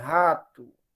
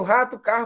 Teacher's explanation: esse H, ele é um H glotal surdo, né? Ela é uma fricativa, né?